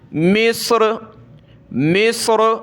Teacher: را کو موٹا ہی کریں گے وقف میں بھی